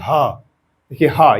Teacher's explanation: ये सीधा कंठ से निकल रहा है कहीं पर वायु फंस नहीं रही इसलिए इसका उच्चारण स्थलर कंठ होगा आप लोग इसको नोट कर लीजिए हम आगे चलते हैं बाकी दो उत्क्षिप्त व्यंजन होते हैं।